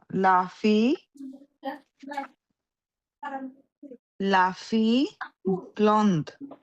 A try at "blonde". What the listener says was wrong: ব্লন্ড না, এটা ব্লদ, ওয়েন অ হবে না, ব্লদ, এই ব্লদ।